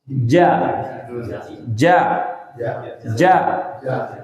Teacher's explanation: Jim itu salah satu makharijul huruf yang tidak boleh keluar nafas. Ja. Ditahan nafasnya.